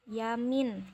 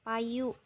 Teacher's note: sebagai dipthong yang selanjutnya itu fonem konsonan semivokal y bersuara dan dihasilkan dengan mendekatkan depan lidah pada langit-langit keras tetapi tidak sampai menghambat udara yang keluar dari paru-paru